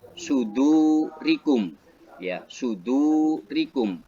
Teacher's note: wawu mati jatuh setelah huruf dal berharokat doma dibaca 1 alif atau 2 harokat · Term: mat tabi'i